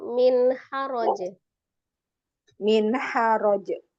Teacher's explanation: kalau misalnya memang berhenti di min haraj itu kan jimnya dikolkolahkan ya, jimnya dikolkolahkan